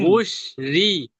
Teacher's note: শিন নয়, সিন। উস রি সিন হালকা আওয়াজ দিয়ে।